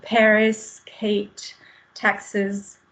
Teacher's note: ces consonnes K, T, P, on sent vraiment l'air sortir